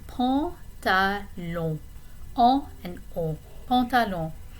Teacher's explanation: we have two nasal vowels there that we need to pay attention to